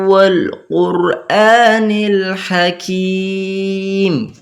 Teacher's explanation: ওয়াও ঈদগামে গুন্না হয়, ওই জন্য গুন্নাও করলাম